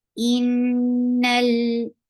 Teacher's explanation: Hamza is very sharp, attached with noon will get sifa of kunna, and this kunna is akmal.